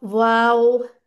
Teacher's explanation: वाओ, इसके लिए होंठ गोल, पूरे पूरे